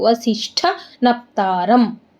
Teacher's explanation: ವಸಿಷ್ಠ ಶಾಗೆ ಠಾವತ್ತು ಮಹಾಪ್ರಾಣ ಇದೆ, ಅದಕ್ಕೆ ಒತ್ತಬೇಕು